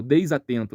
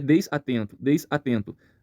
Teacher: esse som do S que seria des atento ele não fica preso a essa primeira sílaba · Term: ligação